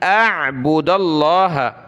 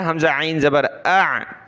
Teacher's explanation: हमज़ा नून ज़बर अन, और हमज़ा को आइन के साथ मिलाया, हमज़ा आइन ज़बर आ, पहले हमज़ा की आवाज़ फिर आइन